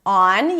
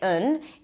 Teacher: instead of pronouncing the full vowel, you need to teach your tongue to go down and pronounce this very neutral sound. Instead of on, you say un.